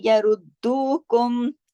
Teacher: सिर्फ दू को खींचना है और रुद को, दाल को 2 मर्तबा पढ़ना है, क्योंकि दाल पर तशदीद है